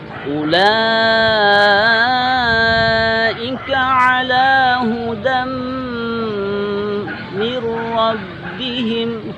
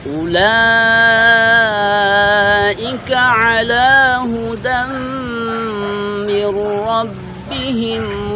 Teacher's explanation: Hudam di sini hukumnya adalah idgham, bertemunya tanwin dengan mim. Oleh karenanya kita tahan selama 2 harakat atau 2 ketukan.